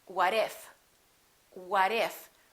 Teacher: the T between 2 vowels sounds like a D even when the T is at the end of the word and the next letter of the following word is a vowel. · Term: fast D